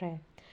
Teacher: जिसमें लुढ़कती हुई हवा बाहर निकले वो है हमारे लुंठित व्यंजन